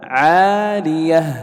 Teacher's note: الألف هنا سبقت بحرف العين، والعين حرف مرقق، فحكم الألف أن ترقق. إذن حكم الألف أنها تابعة لما قبلها، إن سبقت بمفخم فخمت، وإن سبقت بمرقق رققت.